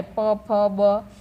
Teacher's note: પ ફ બ ભ મ બોલીએ ને ત્યારે આપણી જે હોઠ હોય બંને ભેગા થાય છે